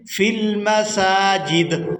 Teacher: وقف کی صورت میں دال کو ساکن کر دیں گے۔